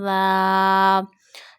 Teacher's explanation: we read zal from the top of the tip of the tongue to the inner edges of upper two front teeth.